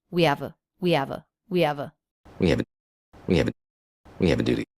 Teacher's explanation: So even though the word duty is stressed, he doesn't really stress it.